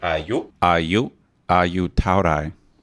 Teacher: You goes up at the end.